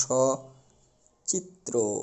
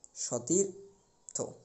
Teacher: এখানে দন্ত স্বর সাথে যে ছিল সেটা ওকারে পরিবর্তন হয়নি। গত ক্লাসে কিন্তু আমরা দেখেছি ওকারে পরিবর্তিত হতে, কারণ রস্বইকার থাকার কারণে, কিন্তু এখানে সেই নিয়মটি প্রযোজ্য হয়নি, কারণ এখানে দন্ত স্বরটি সহ অর্থাৎ সহিত অর্থে ব্যবহৃত হয়েছে।